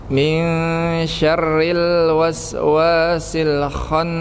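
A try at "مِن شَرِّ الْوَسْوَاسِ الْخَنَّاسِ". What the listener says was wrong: Sekali lagi, syarril, ada seperti kayak apa ya? Bukan lewat gitu aja, bukan syarril, tapi syarril, ada ada hentakan di itu R-nya.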